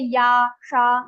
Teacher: ya and sha will also be pronounced from your talu, roof of your mouth. So you have to say ya, sha, you will see your tongue is touching your talu.